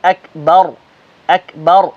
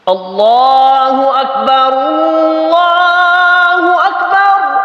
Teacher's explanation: اکبر کا بھی حمزہ کاف باریک، اک با بھی پتلا، آگے را موٹا